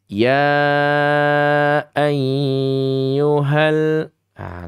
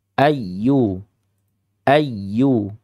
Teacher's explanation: Karena ini ya tasdid asli, maka ya adik-adik semuanya menekannya ya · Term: nabr